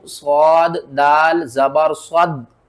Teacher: स्वाद को भी मोटा करना है, कौफ को भी मोटा करके पढ़ना है